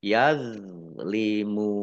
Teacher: Kemudian mim sukun bertemu dengan huruf ya, bacaan izhar safawi dibaca jelas. Yazlimun dok sukun ini bukan kolkolah, jangan dipantulkan ya. Yazlimun mim domah wawu sukun mat tobi'i, tetapi karena bertemu dengan huruf terakhir yang dibaca sukun karena wakof maka menjadi mat arif lis sukun.